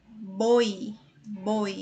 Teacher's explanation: vogais aqui né é o i.a. será eu tenho boi boi eu tenho uma vogal e uma semivogal juntas na mesma sílaba então é ditongo